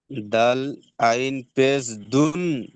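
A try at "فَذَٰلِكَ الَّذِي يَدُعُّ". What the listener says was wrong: দুন নয় ভাই, ডাল আইন পেশ দুর, আইন লাম পেশ উল, ইয়াদুল উল। এই দেখেন, প্রথমে দালের সঙ্গে আইনকে জুড়বে, আবার আইনের সঙ্গে লামকে জুড়বে, এই যে লাম। তাহলে দাল আইন পেশ দু, আইন লাম পেশ উল, উল পড়েন।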